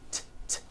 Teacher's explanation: Cat ends with an unvoiced T.